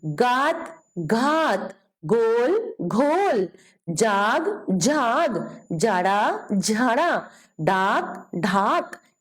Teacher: चौथे वर्ण के उच्चारण के अंत में ह जैसी ध्वनि आती है। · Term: महाप्राण